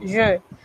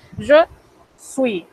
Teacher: Eso es una E cerrada. Aquí hay que cerrar más la boca, mucho más. Este es un sonido que como no existe en español, debemos practicarlo bastante.